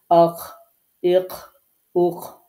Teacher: তো এভাবে প্র্যাকটিস করতে হবে যে আমার গয়নটা কণ্ঠনালীর শেষ ভাগে যাচ্ছে কিনা, হলকের শেষ ভাগে যাচ্ছে কিনা। এরপরে কণ্ঠনালীর শেষ ভাগ থেকে আরেকটা যে হরফ উচ্চারিত হয় সেটা হচ্ছে খ